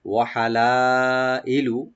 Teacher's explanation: লা এখানে মাধ্যে মুত্তাসিল, চার আলিফ পর্যন্ত টানবেন, আর হামজাকে রাইট দিবেন এখানে মাঝখানে